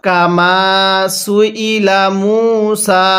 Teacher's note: মিমের মধ্যে এক আলিফ কেন টান? আমি পূর্বেই বলছিলাম, পেশের পরে ওয়াও সাকিন এক আলিফ টানতে হবে।